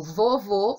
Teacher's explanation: se eu digo vovô o som é fechado que é o chapeuzinho ok então quando você diz essas palavras